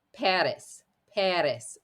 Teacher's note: it's actually almost a very quick D sound at the very front of your mouth the tongue is gently going to tap the back of the teeth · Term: flipped R